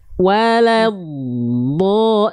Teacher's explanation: Dod itu punya sifat namanya rakhah mengalir suaranya jadi jangan sampai wad berhenti baru keluar vokal O nya itu mengalir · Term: rokhawah